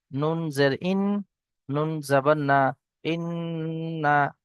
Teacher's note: নুনের উপর তাজিদ এসছে গুনা হবে